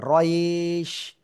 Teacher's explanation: রটা আর একটু মোটা হবে, রইশ।